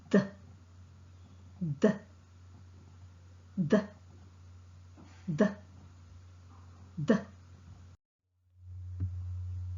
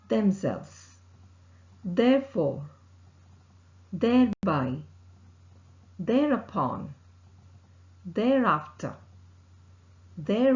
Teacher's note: the sound is a voiced sound which is articulated with the tip of the tongue close to the upper front teeth the air escapes between the upper front teeth and tip of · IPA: ð